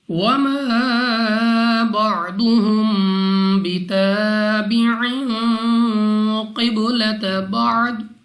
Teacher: وَمَا بَعْضُهُمْ بِتَابِعٍ قِبْلَةَ بَعْضٍ، الف سے پہلے زبر الف مدہ 2 سیکنڈ تک لمبا کر رہا ہے۔ ضاد مستعلیہ میں سے ہے، موٹا پڑھیں گے منہ اور آواز کو کھول کر۔ میم ساکن کے بعد با اخفاء شفوی کا قاعدہ ہے، یہاں پہ ہم غنہ کر کے پڑھیں گے۔